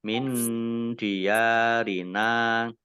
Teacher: Nun sukun bertemu dengan huruf dal bacaan ikhfa dibaca samar-samar.